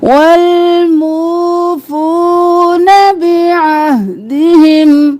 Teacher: عین گلے کے درمیان سے ہا بھاری آواز میں آہ نہیں کرنا ہا ساکن آہ بعہدہم اذا عاہدوا نہیں کرنا عین کھڑی زبر ایک الف کے برابر کھینچنا ہے عین کو گلے کے بالکل درمیان سے نکالنا ہے.